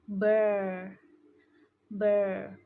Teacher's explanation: American accent uses a stronger R sound, so it sounds more like burr.